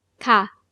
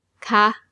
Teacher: For normal statements, with a falling tone. Ka. And for questions, with a high tone.